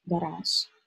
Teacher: We pronounce it with sh, not with z